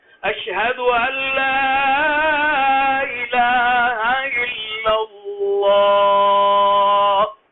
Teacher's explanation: اللہ کے آخر میں ایک ہا ہے، اس ہا کا بھی اظہار ہونا چاہیے